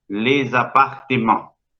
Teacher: la E es una E cerrada para un francés. No es la E exagerada nuestra. Cuando un francés escucha nuestra E, se espanta porque no está acostumbrado a asignar semejante apertura a esa E.